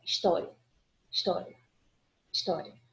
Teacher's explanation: A gente quase não percebe a pronúncia do I. · Aqui, o I é uma semivogal e o A é uma vogal. Por isso que é um ditongo crescente.